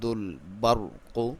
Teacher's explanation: را کو موٹا پڑھیں گے کیونکہ اس سے پہلے زبر ہے